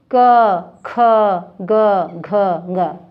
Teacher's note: ये उच्चारण करते समय आपको ये कंठ से हो रहा है उच्चारण, कंठ। अब देखिए, दूसरा है च।